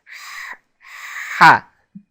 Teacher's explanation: the letter ha in Arabic is produced in the back of the throat by constricting the throat muscles and forcing air through the windpipe